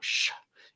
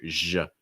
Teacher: Make sure your throat's vibrating. So it's not sh, it's more zh, zh. You need to make sure your throat's vibrating right here.